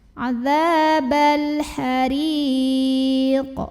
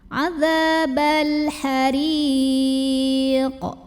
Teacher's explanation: Maka cara membacanya dipantulkan dengan pantulan yang besar. Dan ini karena qafnya huruf tebal, tebalin juga ya. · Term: qalqalah kubra